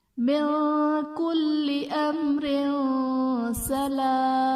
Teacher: امر میم ساکن کے بعد حرف با اور میم کے علاوہ را ہے تو یہاں پر اظہار شفوی کا قاعدہ ہوگا، یعنی میم ساکن میں ہم غنہ نہیں کریں گے، اور تنوین کے بعد حروف اخفا میں سے سین ہے تو یہاں پر اخفا کا غنہ کریں گے۔